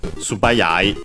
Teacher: the unvoiced consonant becomes voiced because it's the second component of a compound and of strictly Japanese origin